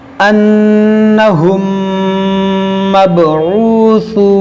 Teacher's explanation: यहाँ पर है इदगाम शफवी, इसका मतलब यहाँ पर गुन्ना करेंगे